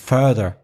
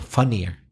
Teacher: in further it's the er sound further and in funnier it's the uh sound